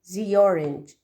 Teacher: The last vowel linked with the first vowel of the second word.